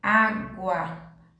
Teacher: botei um outro exemplo aqui na palavra água água de novo o som da letra u saiu mais fraco da letra A aumentou certo então é a gente chama isso de crescente voltando na · começou com o som baixo da letra U e foi aumentando